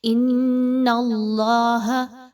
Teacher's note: حمزہ اور نون آپس میں ملاتے ہوئے نون مشدد کا غنہ کیجئے، آواز کو ناک میں لے کر جائیے